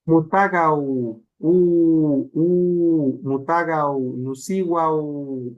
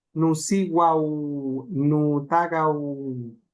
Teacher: es una W al final, la U larga